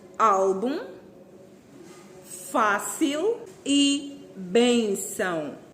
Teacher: acento está na penúltima sílaba começando da direita para esquerda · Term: paroxítonas